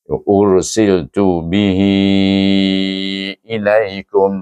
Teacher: maka hendaklah dibaca dia dengan mad empat atau lima harakat dengan mad silah tawilah nama hukumnya